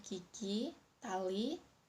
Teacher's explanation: Yang pertama, vokal I adalah vokal tinggi depan bundar. Vokal ini dihasilkan dengan menambahkan lidah bagian depan tinggi mendekati langit-langit dengan kedua bibir agar terentang ke samping.